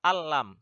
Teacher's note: nun yaitu dimasukkan ke huruf lam tapi enggak berdengung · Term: idgham bilagunnah